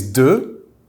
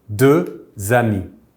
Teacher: The X at the end is silent, however, if a word starting with a vowel comes after, we will make a liaison between these two words